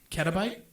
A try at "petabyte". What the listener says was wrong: Peta? I think peta with a P.